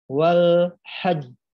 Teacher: ditahan suaranya dua harokat lalu disusul diikuti oleh pantulan atau Qalqalah